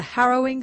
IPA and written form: h'ɛroɪŋ (Harrowing)